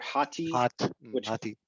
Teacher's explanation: So hat is front, and then hati is a nisba, so it's the thing which is in front. So there's a little semi-vowel on the end, like a Y sound.